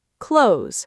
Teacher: They merge into one z sound, clothes.